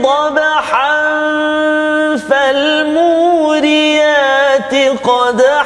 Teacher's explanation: tanwin bertemu dengan fa juga, ikhfa hakiki. Ada dengung. Ada dengung dua harakat.